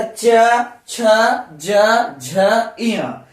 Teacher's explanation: ये सब वर्ण जो है हमारे तालु से, जिह्वा और तालु टकरा रहा है और ये सब वर्ण हमारे मुख से उच्चारित होकर निकल रहा है। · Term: चवर्ग